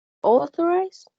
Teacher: It has 3 syllables, and the stress is in the first one.